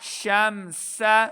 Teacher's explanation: دیکھیں سین ہے، سیٹی کی آواز آئے گی